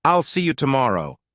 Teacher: notice how there's a tiny pause after I'll and see you. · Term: pausing